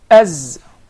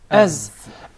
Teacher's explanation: the Zay comes from the tip of the tongue and the palates of the two front top incisors at a point just above the two front lower incisors